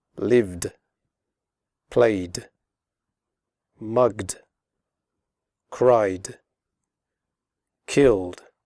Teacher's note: After voiced sounds such as v, g, and y, and all vowel sounds, the final ed is pronounced like d